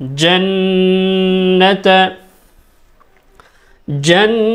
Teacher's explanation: জিম নুন জবর জান, নুনে গুন্না করতে হবে, এখানে গুন্না করা জরুরি।